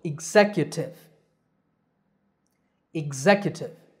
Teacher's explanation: the stress is on the second syllable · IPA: /ɪɡˈzek.jə.tɪv/